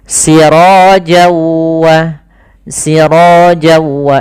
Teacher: kemudian ketemu waw maka n-nya hilang, masuk ke waw, jadi waw-nya double. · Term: idgham bi gunnah